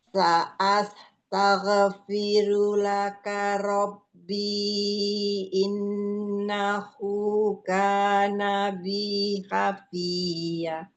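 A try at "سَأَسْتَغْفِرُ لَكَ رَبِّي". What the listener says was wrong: Ghain sukun, jangan mantul. Sa'astaghfiru laka rabbi.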